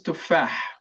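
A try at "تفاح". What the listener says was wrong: But the last letter, it's a letter that we're gonna practice pronouncing it because it's different from ha. It's not tufah, it's tufah.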